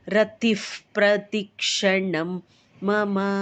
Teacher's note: ವಿಸರ್ಗದ ಮುಂದೆ F sound ಕೊಟ್ಟು ಹೇಳ್ಬೇಕು